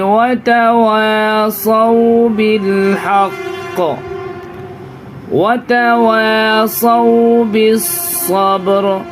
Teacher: یہاں پہ تو را پہ سکون لائیں گے، زبر زیر پیش کو بالکل نہیں کھینچیں گے